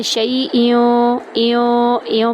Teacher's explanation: ایوں پر ہم غنہ کر رہے ہیں